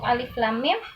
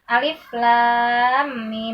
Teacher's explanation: Nah lamnya masuk ke dalam huruf mim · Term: Idgham